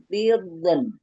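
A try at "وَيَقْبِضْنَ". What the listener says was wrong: Oh, kasih istitolah dotnya. Kasih istitolah dulu dotnya. Tiu tak jangan keluar ujung lidah.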